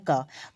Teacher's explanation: क को अगर आप उच्चारण करोगे तो क के साथ अ भी आ रहा है